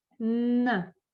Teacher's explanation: When you pronounce n, the air doesn't go out of your mouth, it goes through your nose, and you can feel it if you put your hand here.